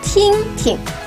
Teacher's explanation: Pay attention that 听 is a single syllable and the second 听 is pronounced in a neutral tone.